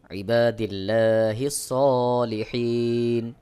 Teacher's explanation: আল্লাহ শব্দের লামকে বারিক বা পাতলা করে উচ্চারণ করতে হবে